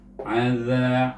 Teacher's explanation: Bila sebut za itu jelikan lidah kita sedikit, ujung lidah itu keluar daripada gigi kacip atas